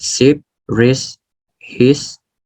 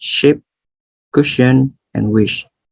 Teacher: there's no complete closure of the mouth, and air moving through the mouth makes audible friction. This is the example for sibilant sounds.